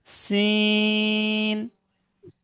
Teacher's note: এক আলিফ টান সিন >> সিন >> এটা এটা উচ্চারণ হবে জিবের আগা উপরের দাত নিচের দাঁতের আগা একসঙ্গে